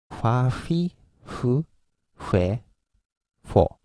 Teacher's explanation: These Fs are not English F. We don't use upper teeth and lower lip. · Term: Japanese F